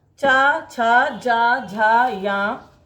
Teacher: चा वर्ग में तालु का जीवा के अग्र भाग से स्पर्श होता है।